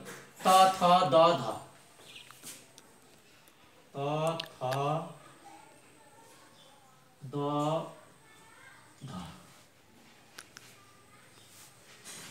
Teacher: दन्त्य माथिल्लो दाँत र जिब्रोको संयोगबाट उच्चारण हुने।